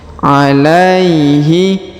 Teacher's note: sukunnya melebur menghilang ke huruf ya bertasdid Ya ditahan dan ditekan huruf la diayun sekali karena di depannya terdapat Ya Sukun